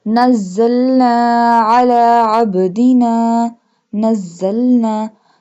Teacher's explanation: This one za pronounced hardly. This one za pronounced from the tip of the tongue touching the root of the top two and bottom two front teeth.